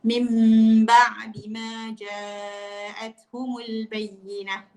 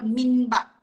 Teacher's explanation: Dia mengubah sepatutnya huruf nun itu disebut menjadi huruf mim. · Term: iklab